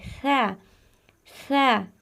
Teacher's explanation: जबान की नोक जरा सी बाहर की तरफ निकाल कर अदा करें यह देखिए जबाने हल्की सी बाहर निकाले और इस हर्फ को